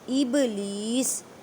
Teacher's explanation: با ساکن ہے اس وجہ سے یہاں پہ کلکلہ کریں. کلکلہ کا مطلب ہے ہلا کر پڑھنا